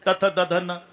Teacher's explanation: जेव्हा संबंध जिभेचा दातासी ते दंते आहे.